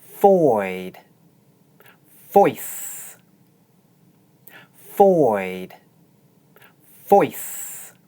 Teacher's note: this diphthong is usually pronounced long, but is compressed before an unvoiced consonant sound. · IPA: /ɔɪ/